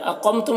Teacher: اقمتم، قاف کو پر پڑھیں گے، میم میں اظہار شفوی ہو رہا ہے، اسے جلد پڑھنا ہے